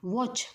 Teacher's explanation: वॉच म्हणताना आपले काय होतात तर ओठ गोल होतात